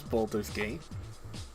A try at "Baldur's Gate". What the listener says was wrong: With your accent, it literally sounded like you were saying Baldo. Like our friend Baldo. Baldur's Gate 3.